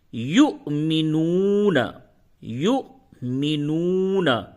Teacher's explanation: और वाव पे जब हमजा होगा तो उसको झटके के साथ अदा करते हैं। और ये जो दूसरा वाव है इस पे हमजा नहीं है। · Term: वाव के ऊपर हमजा